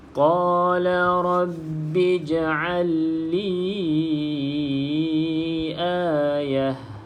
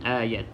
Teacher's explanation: maka kita tak berhenti dia dengan bunyi ta, kita berhenti dengan bunyi ha. Sebab untuk ta yang bulat macam tu bunyi ha kalau kita berhenti.